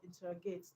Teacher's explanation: Just like in the word interrogate, the stress is on TER. Stress on TER, okay, not on IN.